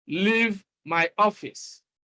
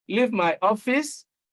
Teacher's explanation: when you are commanding somebody or ordering someone to leave your office, you use the falling tune